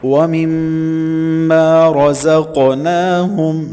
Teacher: قوف کلمے کے درمیان میں ہے اور ساکن بھی ہے تو قلقلہ ہوگا، مطلب کہ ہم نے موٹا بھی کرنا ہے اور اس کو ہلانا بھی ہے۔ وَمِمَّا رَزَقْنَاهُمْ نون کے اوپر کھڑی زبر ہے، 1 سے 1.5 الف تک کھینچیں گے۔